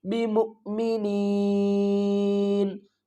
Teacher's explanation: وقف کی صورت میں نون کو ساکن کریں گے اور جو پچھلی والی نون ہے اس کو کھینچ کر پڑھیں گے